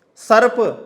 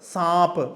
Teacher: शब्द में नासिक की ध्वनि न होने पर भी विकसित रूप में अनुनासिकता आ जाती है